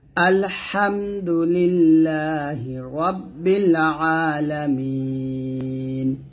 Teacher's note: এটাকে বলে মদ্দে আরজি এখানে তিন টান দিতে হবে